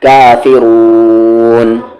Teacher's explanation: یعنی کھینچ کر پڑھیں گے 4 حرکت یا 3 حرکت یا 2 حرکت ایٹ لیسٹ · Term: مد عارض